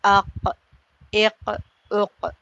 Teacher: جڑ جب کوے کے قریب نرم تالو سے لگتی ہے وہاں سے قاف ادا ہوتا ہے ، جیسے اق، اق، اق۔ آپ خود دیکھ لیں کہ ہمارے